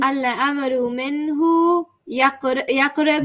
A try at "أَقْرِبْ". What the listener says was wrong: There's no ya, there's a. There's an a. الأمر منه أقرب.